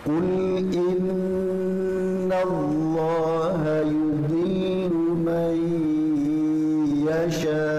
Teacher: nun mati ketemu dengan iya, ini tiga ketukan atau satu putaran ya, satu putaran penuh, jangan dikurangi.